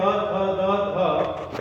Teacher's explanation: ये दांत के स्पर्श से इनका उच्चारण हो रहा है, इसलिए ये दंत्य हैं।